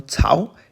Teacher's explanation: A second tone, Tsao, is trough or groove.